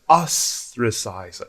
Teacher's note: Pronunciation, 3 syllables, ostracize. So the first syllable is stressed.